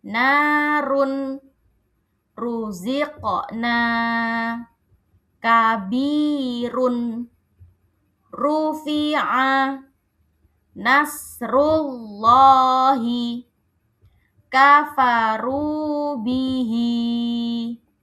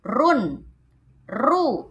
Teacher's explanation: Maka huruf ro-nya terdengar jelas, terdengar tebal.